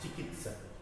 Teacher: चिकित्सक, ये तो शब्द चिकित्सक, चिकित्सक शब्द सही है, इसमें त आधा है, त का उच्चारण बहुत कम देर के लिए बोला जाता है। चिकित्सक त पूरा, लेकिन इसमें लिखा है चिकित्सक, तो ये गलती है, त आधा है, चिकित्सक।